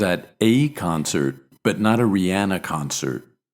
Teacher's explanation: here we stress the indefinite article but not the noun because we mean I was at a concert in general but